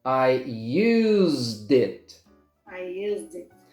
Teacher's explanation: And now you link the D to the I, did. I used it.